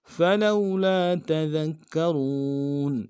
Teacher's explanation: سے ادا کریں گے، لام کو واو کے ساتھ ملانا ہے، واو لین بغیر کھینچے پڑیں گے